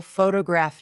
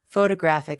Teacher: photograph noun is stressed on the first syllable. Photographic adjective is stressed on the third.